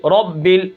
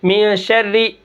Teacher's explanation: را کے اوپر زبر، را موٹی